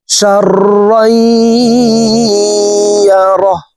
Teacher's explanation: তানউইনের পরে ইদগামে বা গুন্নার হরফ ইয়া আছে, এই কারণে এই তানউইন ওয়ালা রটি তাসদিদ ওয়ালা ইয়ার সাথে গুন্নার সহিত মিলাইয়া পড়ব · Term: ইদগামে বা গুন্নাহ